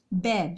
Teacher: हम उच्चारण करते हैं तो हमारे दोनों होठ आपस में मिलते हैं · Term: ओष्ठौ